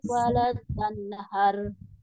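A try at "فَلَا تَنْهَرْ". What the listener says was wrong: Falanya kurang panjang. Fala tanharu.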